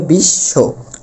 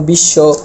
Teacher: এখানে বয়ের কোনো উচ্চারণ হয়নি, কিন্তু ব যার সাথে যুক্ত হয়েছে সে দ্বিতীয় হয়েছে, মানে সে দুইবার ব্যবহৃত হয়েছে।